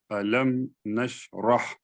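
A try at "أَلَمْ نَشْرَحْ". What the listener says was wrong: آ بول رہے ہیں آپ. آ الف زبر آ وہی بول رہے ہیں نا. الف فتح آ وہی بول رہے ہیں نا آپ.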